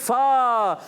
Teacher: اوپر کے دانتوں کے کنارے جب نیچے والے ہونٹ کے تر حصے سے لگتے ہیں تو ادا ہوتا ہے فا